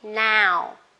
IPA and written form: naʊ (now)